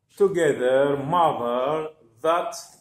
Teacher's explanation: C'est la même position de la production du son ed, sauf que j'avance un petit peu la langue et je la pince avec les incisives et on expire l'air à cet endroit pour produire the.